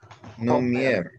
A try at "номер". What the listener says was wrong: Не хомер, номер. Не. Это русский. Не. Номер.